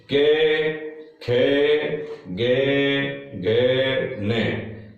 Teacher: जब हम इनका उच्चारण करते हैं तो वो ध्वनि हमारी कहां से निकलती है? कंठ से निकलती है। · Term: क वर्ग